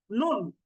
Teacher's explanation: জিহ্বার আগা তার বরাবর উপরের তালুর সঙ্গে লাগিয়ে নুন